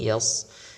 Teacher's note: namun jangan terpengaruh huruf sebelumnya huruf ya Misalnya di ayat ini Yas itu untuk ditebalkan karena huruf sad